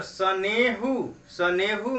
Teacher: सनेहु में ने पर न पर ए की जो मात्रा है वह दीर्घ है, तो वहां वह द्विमात्रिक हो जाएगी।